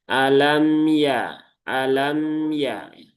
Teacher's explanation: Karena mim sukun itu punya sifat salah satunya adalah tawasuk. Bukan syiddah.